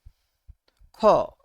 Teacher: চাপের আধিক্য থাকে তাকে বলা হয় মহাপ্রাণ ধ্বনি মানে হচ্ছে আপনি যে ধ্বনিটা উচ্চারণ করছেন বাতাসটা তীব্র বেগে বের হচ্ছে খ আপনি মুখে হাতে সামনে দিয়ে খেন বাতাস হিট